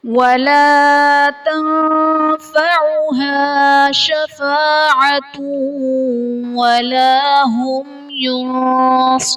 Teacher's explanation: تنفعها میں نون ساکن کے بعد حروف اخفاء میں سے فا آ رہا ہے تو یہاں پر اخفاء کا قاعدہ ہوگا، یعنی نون ساکن میں ہم غنہ کر کے پڑھیں گے